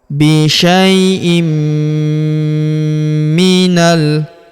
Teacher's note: Kemudian tanwin in huruf in bertemu huruf mi berharakat tasydid. Maka tanwin innya melebur ke huruf mi. Kita tahan dan tekan serta kita dengungkan dua sampai 3 harakat. Bisyaiim minal.